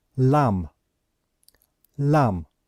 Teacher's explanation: so we know that we do not pronounce the last letter B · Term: silent